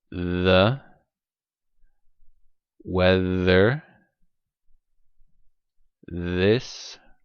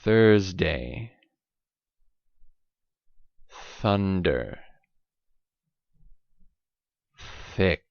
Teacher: So the weather this is voiced. Thursday thunder thick is voiceless.